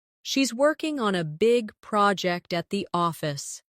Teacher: Stress working big project and office.